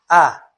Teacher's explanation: Quanto à articulação, a média ou medial, A, é o som produzido quando a língua se conserva quase em repouso. A língua, a pessoa fala, quase que nem precisa mexer com a língua.